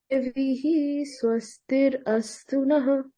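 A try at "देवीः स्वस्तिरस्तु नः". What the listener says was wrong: So don't pause in between. Devi swastirastu nah.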